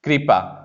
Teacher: हम जब उच्चारित करते हैं तो हम पूरी तरह से री नहीं बोलते हैं